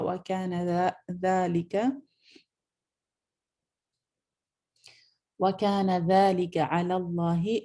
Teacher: لام جلالہ فل ماؤتھ پڑھا جائے گا